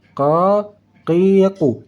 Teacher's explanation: pangkal lidah saat kita membaca huruf kaf naik ke langit-langit bagian belakang